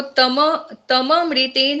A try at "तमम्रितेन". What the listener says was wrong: तमम रितेन, तम नहीं है, तमम रितेन, म पूरा है ना?